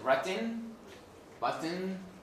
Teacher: here the ne takes the place of the vowel of the peak to be a peak of the syllable